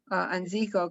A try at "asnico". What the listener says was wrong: No, it's not Anzico, it's Asnico.